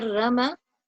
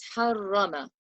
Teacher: on it again if i say rama it will be incorrect so i have to recite it with a full mouth and resonate the raw a little